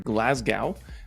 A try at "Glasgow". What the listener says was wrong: Glasgow. It's Glasgow. You don't say the W. It's Glasgow.